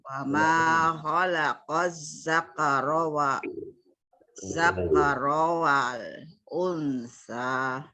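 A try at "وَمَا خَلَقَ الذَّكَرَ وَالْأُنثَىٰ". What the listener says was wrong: Unnya digunakan, dengungkan. Unsa. Ulangi lagi coba.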